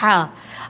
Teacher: اب لفظ ہا یہ حلق کے درمیانی حصے سے ادا ہوتا ہے